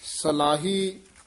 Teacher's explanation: ਸਾਲਾਹ ਕੰਨਾਂ ਲਾ ਕੇ ਨਹੀਂ ਬੋਲਣਾ